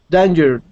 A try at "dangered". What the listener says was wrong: Okay, give me a good D sound at the end there. Dangered.